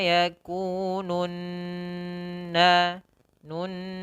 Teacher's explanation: nun, masukkan ke rongga hidung